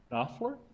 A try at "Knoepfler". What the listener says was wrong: It's a silent K, Knoepfler.